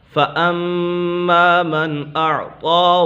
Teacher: فَأَمَّا میم مشدد ہے، میم مشدد میں ہمیشہ غنہ ہوتا ہے